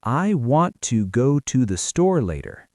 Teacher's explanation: The stressed words are want, go, store. Everything else is soft and fast.